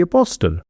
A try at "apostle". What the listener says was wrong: I think it's apostle. The T is silent.